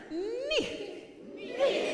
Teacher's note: And you feel when you enunciate that consonant that way, you can feel the sound kind of coming, pushing into the hard palate, coming through the nose. It's really forward. It's a little bit nasal. It's a little bit has a little bit of an edge to it. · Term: forward placement